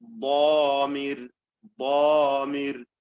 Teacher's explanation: കഠിനമായ തഫ്ഖീമാണ് മുത്ബഖായ ഇത്ബാഖോടുകൂടി ഒട്ടിച്ചു വെച്ചുകൊണ്ട്, നാവും അണ്ണാക്കും ചേർത്ത് ഒട്ടിച്ചു വെച്ചുകൊണ്ട് ഉച്ചരിക്കുന്നതായ ദ്വാദിലുള്ളത്. ദ്വാദ്.